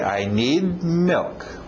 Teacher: Engole aquele D no final.